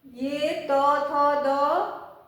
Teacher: ये त, थ, द ये जब हम लोग बोलते हैं तो हमारी जीभ की नोक ऊपर जाती है दांत के पास। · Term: दंत्य